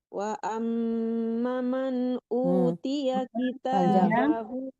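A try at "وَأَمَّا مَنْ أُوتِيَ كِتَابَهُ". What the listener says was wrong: Wa amma panjang mahnya.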